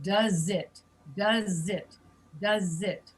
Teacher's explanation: And in English, you're going to link does and it.